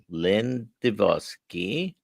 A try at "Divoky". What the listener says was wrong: no, there's no S. It's Divoky.